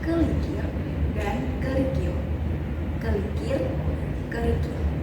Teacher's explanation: Terdapat perpindahan konsonan apiko-alveolar yang terdapat pada silabel kedua yang bertukar tempat dengan konsonan getar lamino-palatal sehingga kata kelikir menjadi kerikil.